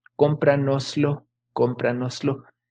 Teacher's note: en el español del centro de México es que esa ese final del nos se pierde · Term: pérdida